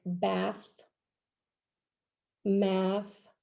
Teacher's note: in the final position it's voiceless like bath math